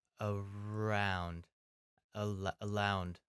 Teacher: when I'm pronouncing that are my tongue is actually kind of back in my mouth kind of like sitting low and back